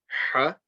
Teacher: Keep that ha, that clear, strong sound from the middle of the throat